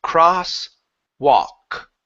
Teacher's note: we do not pronounce the L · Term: L is silent